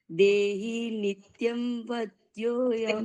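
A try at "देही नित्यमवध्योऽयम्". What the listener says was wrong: નિત્યમ નથી, નિત્યમ. મકાર આખો બોલાવો જોઈએ.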